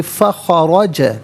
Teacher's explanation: را پر زبر، را کو پر کر کے پڑھا جائے گا